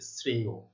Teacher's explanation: এটির উচ্চারণ হবে অন্ত অ, অর্থাৎ অন্ত অ এর বা শেষের অ এর উচ্চারণ ও এর মতো হচ্ছে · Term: ওবত